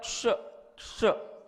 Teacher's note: और एक होता है श, ये मूर्धन्य श होता है। इसका उत्पत्ति स्थान जो है जो मूर्धा की ओर होता है